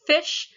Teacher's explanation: putting our lips to our teeth or really our teeth to our lips here to make the sounds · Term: labial dental